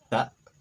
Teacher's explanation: dibaca ta dengan ditahan tapi ditarik pada pangkal tenggorokan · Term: Hamzah sakinah